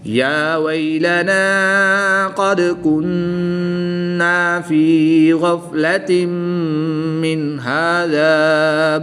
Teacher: نون ساکن کے بعد ہا حروف حلقی میں سے ہے تو یہاں پر غنہ نہیں کریں گے بلکہ اظہار کر کے پڑھیں گے